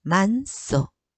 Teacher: 히읗 다음에 시옷이 결합될 때 뒤에 있는 시옷이 된 소리로 난다고 했어요